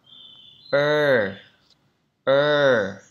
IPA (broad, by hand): ɜ